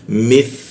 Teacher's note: Tha di mana lidahnya digigit ya.